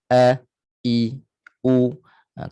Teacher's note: Huruf hamzah makhrajnya di tengah tekak.